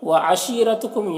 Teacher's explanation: یہاں پر یا مدہ ہے، اسے ایک الف کے برابر کھینچیں گے۔ رو کے اوپر زبر ہے، رو کو پر پڑھیں گے۔